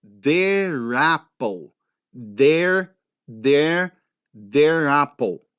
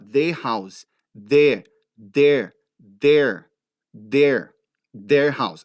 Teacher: Se a próxima palavra começar com som de vogal, você tem que rolar aquele R para cima da vogal. Ele tem que rolar.